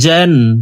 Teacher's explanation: জিম হরফকে জিহ্বার মধ্যখান থেকে পড়ব